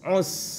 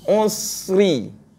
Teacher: teruskan dia ada rakhawah pada sin tu